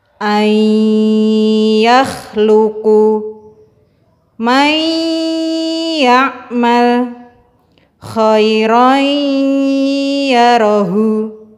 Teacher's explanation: Apabila nun sukun atau tanwin bertemu dengan huruf ya, nun, mim, waw, cara membacanya diidghamkan atau dimasukkan ke dalam huruf berikutnya dengan gunnah yang dipanjangkan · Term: Idgham bi gunnah